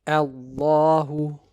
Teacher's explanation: the lam in lafzul jalala will be recited with tafkhim